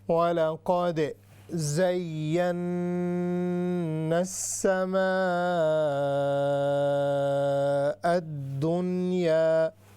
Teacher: آگے ہے وَعَلَىٰ قَادِ، اس پر قلقلہ ہوگا، یعنی ہم اس کو باؤنس کریں گے۔ زین، یہ یا مشددہ ہے، یا پر شد ہے، اس کے بعد نون پر غنہ بھی ہو رہا ہے